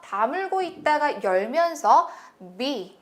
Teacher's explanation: 이 알파벳 B 소리는요, 다물고 있다가 열면서 B, 터트린다는 느낌 해주셔야 되겠고요